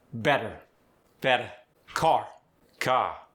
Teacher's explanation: The R is softer or just dropped.